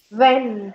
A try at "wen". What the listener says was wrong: Wen. It's a long E, don't say when. Wen.